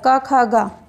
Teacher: जिन वर्णों के उच्चारण में जिह्वा के मूल का स्पर्श होता है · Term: जिह्वा मूलीय